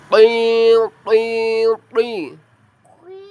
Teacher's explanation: Cara pelafalannya, ujung lidah menempel gusi atas. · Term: huruf tho